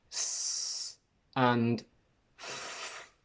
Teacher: You will feel that there is no vibration in your throat, meaning that your vocal cords are completely open. A sound that has completely open vocal cords is called voiceless because there is no vibration.